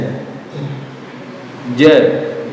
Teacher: Jimnya tidak ada hembusan nafas ya, karena huruf jim itu tidak ada sifat hamznya.